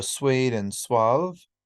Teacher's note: the lips are rounded so just like for the vowel ooh we have the same position for the consonant the W